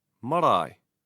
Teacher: For example, I, as in marae. Hear how the stress is on the diphthong marae.